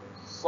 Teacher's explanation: kita akan wakafkan dengan dal lah. Dal yang dimatikan. Maka apa hukumnya ada di situ? Adalah hukum qalqalah. Maka kena mendetak. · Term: qalqalah wusta